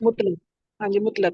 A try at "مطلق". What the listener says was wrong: मुतलिक नहीं, मुतलिक लफ्ज़ नहीं है, मुतलुक भी नहीं है, इजहार मुतलक। मुतलक جی اظہار مطلق یہ لفظ ہے. اچھا اب اس کی ڈیفینیشن قانون ہے یہ، مطلب لفظ صحیح کروایا پہلے، مطلب یعنی تلفظ اظہار مطلق.